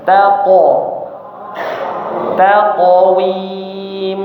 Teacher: huruf qof tebal sebelum dan sesudahnya tipis semua